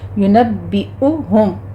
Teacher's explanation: پڑھتے ہوئے میم مشدد ہے، یہاں پہ غنہ واجبہ کریں گے، ینبئہم حمزہ کی ساؤنڈ لے کر آنی ہے، عین کی نہیں ، ینبئہم، باقی پر تشدید ہے، سختی کیجئے، آگے میم ساکن